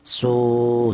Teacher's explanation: panjangnya yaitu satu alif atau dua harakat atau dua ketukan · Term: mad thobi'i